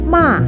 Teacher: The fourth tone is falling from degree 5 to 1.